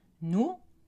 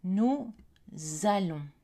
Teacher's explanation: Exemple, nous, le S est silencieux, mais quand il est suivi d'un verbe, nous allons. Et la consonne de liaison ZE est prononcée au début du mot allons